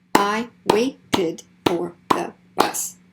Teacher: So now when we add this ed ending, we have an extra syllable.